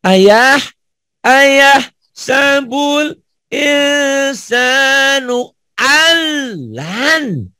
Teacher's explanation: Alnya jangan ditahan, nyamber doang. Lannya di nyamber dan ditahan karena ini ada hukum nun mati ketemu nun gunah, idgham bi gunah. Ndanya qalqalah.